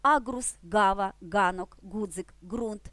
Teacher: і сьогодні вона має тут своє законне 5 місце позначаючи зімкнену проривний дзвінкий приголосний звук ґ